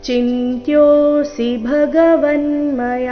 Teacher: ಚಿಂತ್ಯೋಸಿ ಭಗವನ್ಮಯ [ಸಂಗೀತ] ಚಿಂತ್ಯೋಸಿ ಇಲ್ಲಿ ಚಿಂತ್ಯೋಸಿ ಈ ರೀತಿ ಸಿ ದೀರ್ಘ ಮಾಡಬಾರದು ಯೋದೀರ್ಘ ಸಿ ರಸ್ವ ಬರಬೇಕು